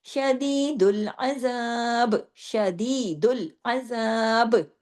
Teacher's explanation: ہم نے با کی حرکت کو نہیں پڑھا تو با ہو گیا جزم والا سکون والا، تو با پہ ہوگا کلکلا